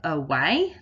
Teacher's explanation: the first a and that says uh which is that schwa sound